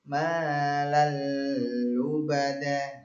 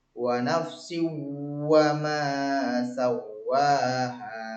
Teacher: Malal lubada, nggak ada dengung-dengungnya. Sedangkan yang tadi yang diguna wa nafsi wa ma sawwaha, ada dengungnya.